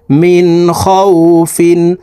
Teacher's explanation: নুন সাকিনের পরে ইজহারের হরফ খ আসছে এই কারণে এই নুন সাকিনকে গুন্না ছাড়া স্পষ্ট করিয়া পড়বো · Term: গুন্নাহ ছাড়া